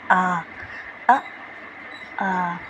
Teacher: विव्रत स्वर, इसमें पूरा मुंह खुलता है